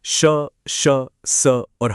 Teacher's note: मुंह पूरा नहीं खुलता, बस थोड़ा सा, जिससे हवा एक घर्षण, एक फ्रिक्शन के साथ बाहर निकलती है। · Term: विवृत